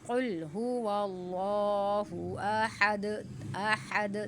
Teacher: دال پر قلقلہ ہو رہا ہے